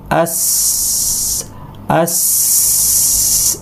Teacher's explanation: আমরা চিন্তা করবো যে আমাদের জিহ্বাটা ফ্ল্যাট থাকবে এটা উচ্চারণ করার সময়, সিনটা উচ্চারণ করার সময় আস আস এইভাবে উচ্চারণ করব এবং খুব শার্প একটা আওয়াজ আসবে